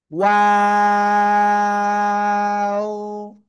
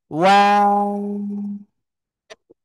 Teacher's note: প্রথমে গোল, আবার মাঝখানে দুই দিকে প্রসারিত হবে, শেষে এসে আবার গোল হবে